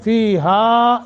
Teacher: وانزلنا، نون ساکن کے بعد وہی قاعدہ جو انزلنا والا ہے، اور نا ایک سیکنڈ کی مد، فیہا یہاں زیادہ مد کرنی ہے، مد منفصل ہے، لمبا کرنا ہے۔